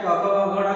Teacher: क ख ग घ किससे बोला जाता है, तो कंठ से बोला जाता है।